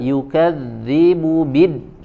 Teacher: Berbeda dengan huruf dal, yukadzibu bid, ya, kalau dal dia memiliki sifat syiddah, betul, ya, maka tidak boleh mengalir suaranya